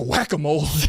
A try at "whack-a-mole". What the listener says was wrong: you said you definitely said whacka with a h in there